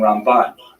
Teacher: The accent, if you want to be one of the cognoscenti and go to the yeshiva and impress all your friends there, Rambam is pronounced with the emphasis on the first syllable, Rambam, and Ramban is pronounced with the emphasis on the second syllable, Rambam and Ramban.